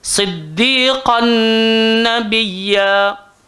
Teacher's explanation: Selepas lukisan tak selari itu pula ada sabdu. Maka dia minta kita dengung masuk dekat dalam nun itu, masukkan tanwin dalam nun dalam keadaan dengung. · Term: idgham ma'al ghunnah